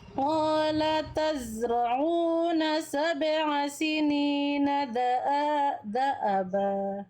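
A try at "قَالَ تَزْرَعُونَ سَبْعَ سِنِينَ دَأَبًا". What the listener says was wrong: Iya, da'aba, jangan ke bawah nada. Ulang.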